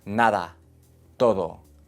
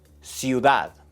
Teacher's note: La D suave es más común, usualmente entre vocales. Nada, todo. Es similar a TH en inglés.